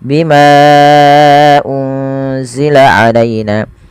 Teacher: dinamakan mad jaiz. Panjangnya empat atau lima harakat